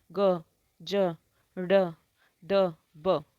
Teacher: गले पर हाथ रख के देखो, कंपन होगी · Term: सघोष वर्ण